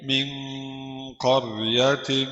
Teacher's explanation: نون ساكنة مخفاة عند القاف المفتوحة بغن حركتين.